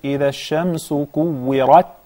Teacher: كورت. Yes, and make sure the ra has the zabar, fatha, and it is mufakhama